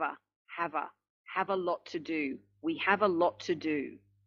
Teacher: Again, we've got lot and to, lot to, lot to, lot to. Just one T is being pronounced. And if we also look at the linking, we have a lot to do.